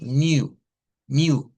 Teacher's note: ese sonido es literalmente una i redonda · es la misma I que usted y yo ya sabemos hacer, pero los labios, en vez de estar estirados, los hacemos como que fuera una letra O. Y decimos U, U.